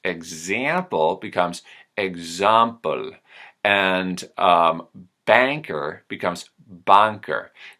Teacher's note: the O shape in the front of my mouth turns my general American ah sound into something closer to an awl sound